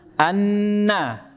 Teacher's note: ujung lidah kena gusi gigi seri atas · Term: non